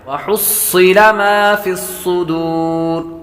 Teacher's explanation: صاد حروف مستعلیہ میں سے بھی ہے اور سیٹی کی آواز بھی آئے گی. وحصل ما فی الصدور مد عارض بنے گی.